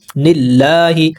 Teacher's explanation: لام کے اوپر کھڑا زبر ہے، 2 حرکات کے برابر لمبا کریں گے